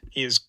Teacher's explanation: There's a little bit of devoicing of that z right before it. It's partially voiced, partially devoiced.